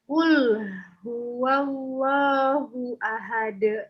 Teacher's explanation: Kalau tidak ditarik, bacanya seperti ini jadinya. Kul hu. Jadi tebal lamnya. Padahal lam itu punya sifat tipis. Nah, dia bukan isti'la tapi istifal.